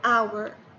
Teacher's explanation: الكلمة هذه تبدأ ب H، لكن ال H هنا silent ما ينطق،